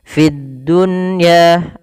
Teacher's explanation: Fid dunya ada di sini alif lam, kita namakan dengan alif lam syamsiyah, yaitu alif lam yang tertulis tapi tidak dibaca lamnya, langsung ke huruf dal dan dia ditasydidkan